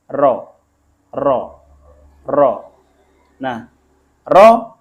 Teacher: kalau dzal itu ujung lidah dengan ujung gigi atas kemudian roh ujung lidah ini agak masuk ke dalam sedikit dan bergetar sedikit roh roh makhrajnya ini tidak boleh terlalu banyak getaran [Musik] Bismillahirohmanirohim